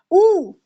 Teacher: छोटा ऊ, बड़ा ऊ और पवर्ग का उच्चारण होठ से होता है। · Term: ओष्ठ